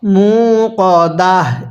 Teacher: ওয়াকফের সময় এই তাকে আমরা হা বানিয়ে দিব